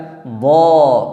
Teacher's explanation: pada saat kita mengucapkan huruf dhad, pangkal lidah kita terangkat ke langit-langit mulut, sehingga menyebabkan hurufnya tebal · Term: isti'la